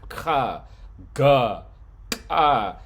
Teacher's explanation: Velar are sounds that are made like in the back of your throat.